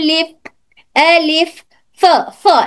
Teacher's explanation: ऊपर के दोनों दांत नीचे के होठ की तरी को टच होकर आवाज बंद होती है।